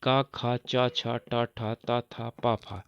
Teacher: यानी कि पहला और दूसरा वर्ण, ये सब अघोष होते हैं